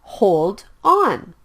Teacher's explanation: hold ends with the consonant sound d and on starts with the vowel sound o so the sound is blended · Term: consonant and vowel blends